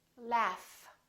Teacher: this gh is actually an f sound right there's no vibration in my vocal chords so the f is actually a voiceless sound so that means